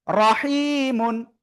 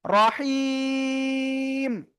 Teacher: থেমে পড়লে শেষে যদি সাকিন হয় তার আগে যদি কি আমরা এক আলিফ মাত পাই তাহলে এখানে তিন আলিফ টেনে পড়তে হবে